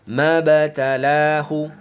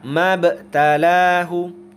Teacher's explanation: maka qalqalahnya adalah qalqalah sughra atau qalqalah kecil. Maka pantulan huruf ba-nya itu ringan saja, jangan terlalu keras.